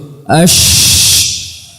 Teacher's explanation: Adapun huruf shin sama dengan huruf jim, sama-sama dari tengah lidah dan tengah langit-langit keras. Namun huruf shin dia makhrajnya dia renggang, ya, ash, dan dia memiliki sifat tafasyi, suara yang menyebar, intisyarus saut, ya, atau intisyarul hawa, udara yang menyebar di mulut.